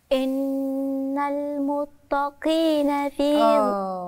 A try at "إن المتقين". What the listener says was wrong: تاء دي ولا طاء؟ اللي في المصحف قدامكم تاء ولا طاء؟ هم اسمهم المتقين ولا اسمهم المتقين؟